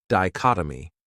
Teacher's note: This word has 4 syllables, and the stress is on that second syllable, dichotomy.